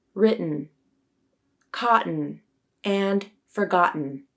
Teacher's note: You make a glottal stop with your vocal cords by quickly closing the vocal cords to stop the airflow. We use a glottal stop when T comes before N in final unstressed syllables, like in the words written, cotton, and forgotten.